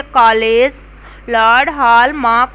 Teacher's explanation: यह स्वर ध्वनियाँ आ है। इसका उच्चारण अ तथा ओ के बीच का है। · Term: आगत स्वर